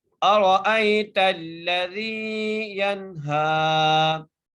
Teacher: ارأیت الذی ینہا، یا کو نون سے ملائیں گے، یہاں پر نون ساکن ہے، غنہ نہیں کریں گے، ٹھیک ہے، کیونکہ حرف حلقے میں سے ہا آ گیا ہے، اور ہا کو ہم ایک الف کی مقدار کھینچ کر پڑھیں گے